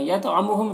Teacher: تو کو پر پڑھیں گے، حروف مستعلیہ میں سے ہے، اور تو میں قلقلہ بھی کرنا ہے